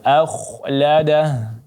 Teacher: huruf kha-nya ditebalkan karena sebelumnya ada hamzah, huruf yang hamzah berbaris fathah maka dia menjadi tebal.